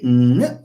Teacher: When you say ng, we are closing the oral cavity. So the air does not flow through the oral cavity, but rather through the nose. · Ng is way back. It's at the level of the velum or the hard palate. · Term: nasal